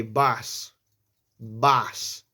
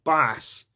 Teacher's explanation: It's like you're saying bus, but it's like more rounded.